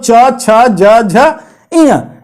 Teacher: इन सारों का उच्चारण स्थान आपका तालु होता है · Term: चवर्ग